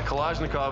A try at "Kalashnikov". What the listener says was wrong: Putting the emphasis on the wrong syllables there, Kalashnikov.